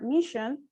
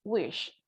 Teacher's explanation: sh is voiceless and it's a fricative and it is a palatal or post alveolar